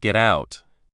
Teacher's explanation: But when spoken naturally, it often sounds like gout. The T sound at the end of get often disappears and the G sound at the start of get becomes a little softer almost as if it belongs to the next word.